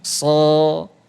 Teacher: Sa kan tipis. Nah, sod itu ya karena tebal dia udara nafasnya lebih banyak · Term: huruf tebal